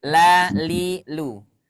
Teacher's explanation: lam itu selalu dibaca tipis mau dia kasrh mau dia fathah mau dia dah selalu dibaca